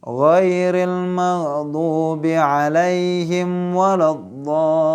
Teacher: jangan sampai terjadi qalqalah pada huruf gha karena dia bukan huruf qalqalah